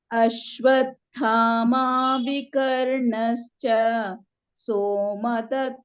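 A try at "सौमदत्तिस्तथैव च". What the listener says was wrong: He's not so. In Sanskrit, in Hindi you may say so, but here you must say Sauma. Saumadattis tathaiva cha. There are two strokes there. Sau. Saumadatti. Saumadattis tathaiva cha.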